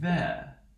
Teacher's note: And here, if we're going to transcribe this, we have our th, right? We have our interdental fricative that's voiced.